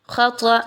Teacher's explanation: خطأ، اب یہاں پہ دیکھیے تو خا اور طا دونوں ایسے حروف ہیں جو کہ حروف مستعلیہ میں سے ہیں، پر پڑھے جانے والے ہیں، دونوں کو موٹا کر کے پڑھیں گے تخفیم کے ساتھ